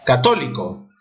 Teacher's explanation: mayor fuerza de voz en to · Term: esdrújulas